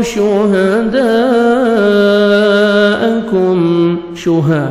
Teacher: مد واجب ہے، اسی کلمہ میں حمزہ آ رہے ہیں حروف مدہ کے الف مدہ کے بعد، تو 4 سے 5 سیکنڈ آپ نے ایکسٹرا مد کرنی ہے